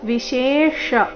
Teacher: ವಿಶೇಷ ಮೊದಲು ತಾಲವ್ಯ ಶಂತರ ಮೂರ್ಧನ್ಯ ಶೇಷ